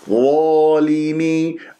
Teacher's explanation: أنت تكور لي الشفاء ليش؟ انظر إلى المرآة وانظر كيف تقراها، ظالمي مفخمة مرتبة أولى مفتوحة بعدها ألف، الألف بعدها تفخم تبعا للظا ، والألف بعدها ساكنة ما الطبيعة حركتين، اكسر اللام والميم وعندك